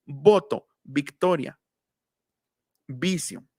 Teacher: En español decimos voto, bilabial